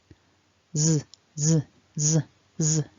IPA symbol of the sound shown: z